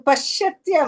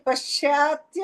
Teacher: ಪಶ್ಚಾತ್ಯ ಅಂತ ಹೇಳಬೇಡಿ ಪಶ್ತ್ಯ ದೀರ್ಘ ಇಲ್ಲ